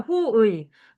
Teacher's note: 첫 음절이 아닌 경우에는 단모음 이로 발음하는 게 허용된대.